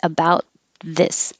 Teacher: you don't have to release the t about just hold it about this so let me know if